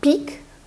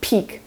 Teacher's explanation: in peak, P is aspirated. You say peak and there's a bit of air that flows through. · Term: aspiration